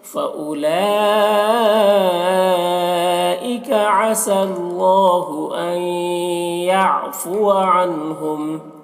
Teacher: عنہم کے نون میں اظہار ہو رہا ہے، اسے جلد پڑھیں گے